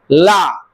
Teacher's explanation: हवा इधर उधर से निकल रही है · ऐसे वर्ण के उच्चारण में जहां हवा पार्व से निकल जाए जीभ के अगल-बगल से निकल जाए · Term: पार्श्विक